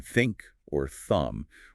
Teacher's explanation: the unvoiced th like in think or thumb where your vocal cords are relaxed